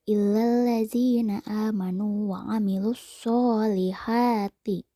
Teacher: Kata so dan ha dipanjangkan 2 harokat. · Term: mad tobi'i